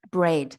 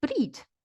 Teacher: But if you go to New Zealand, they'll say breed. They say E, a very short E